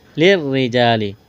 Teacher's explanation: را کو باریک کرنا ہے، را کے نیچے زیر ہے ، الف مدہ ہے، ایک الف کے برابر کھینچنا ہے، لِلرِّجَالِ،